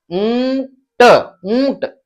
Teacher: थोड़ा सा नाक से उच्चारण होता है चंद्र बिंदु का, ऊंट ऊंट, इस प्रकार से बोलते हैं इसे।